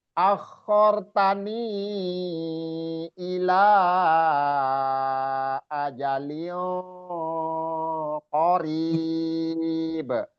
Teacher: ni-nya panjang 4-5 harokat kalau disambung karena bertemu alif hamzah